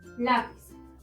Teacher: La es la sílaba tónica, es decir, la penúltima sílaba. Por ello, al no terminar en N, S o vocal, debemos acentuarla.